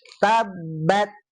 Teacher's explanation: huruf ta itu kalau dari segi suara dia punya sifat syiddah dulu. Nah, baru hames gitu.